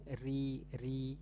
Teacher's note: dia harus ada ujung lidahnya yang bergetar Nah itu sifat takrir